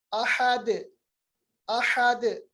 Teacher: हमजा पे जबर है, ये अक्साई हलक मखरज है इसका। हा जो है वस्त हलक से है, अहद के बजाय ये है अहद, ह, ह, अहद।